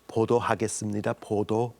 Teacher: So and look in the mirror because lip rounding, 보도하겠습니다, 보도. You should really have a lot of lip rounding